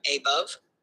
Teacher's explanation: A is unstressed and bove is stressed. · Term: I am